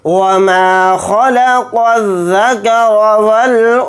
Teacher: تو اس لیے اس میں اخفا کا قاعدہ ہو رہا ہے، یہاں پر اس نون کی آواز کو ناک میں چھپا کر اخفا کے ساتھ پڑھیں گے